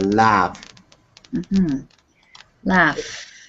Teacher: it's voiceless so it's all the f sound is just in your mouth